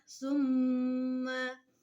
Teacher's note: disebut gunnah karena mimnya bertasdid